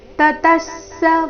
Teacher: ತತಸ್ಸ ವಿಸರ್ಗದ ಅರ್ಧ ಸ ಮುಂದಿನ ಪೂರ್ತಿಸ ಒಟ್ಟಿಗೆ